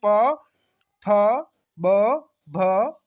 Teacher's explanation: जीवा के सहयोग से दोनों ओष्ठ परस्पर मिलकर उच्चारण होता है। ठीक है, दोनों ओष्ठ परस्पर मिलकर इनका उच्चारण होता है। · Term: ओष्ठ वर्ण